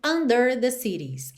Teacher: O der acabou ganhando aí um destaque maior do que ele teria no dia a dia